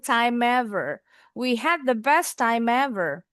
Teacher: Boleh juga time sama ever disambung.